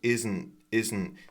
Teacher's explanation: Isn't this T is unreleased?